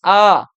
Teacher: মুখ গহ্বর কিন্তু সব থেকে বেশি উন্মুক্ত, ওপেন হয়ে যায়